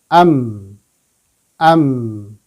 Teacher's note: huruf mim itu keluarnya dari dua bibir yang tertutup ya dua bibir yang tertutup am am ya jadi ditutup bibirnya